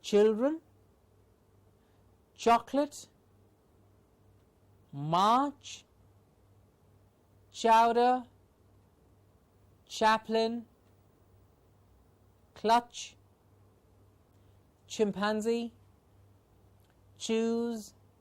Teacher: ch is a palato-alveolar sound